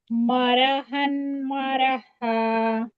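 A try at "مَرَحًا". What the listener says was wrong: रॉ मोटा करें, रॉ। बीन को मोटा नहीं करना, मोरो नहीं।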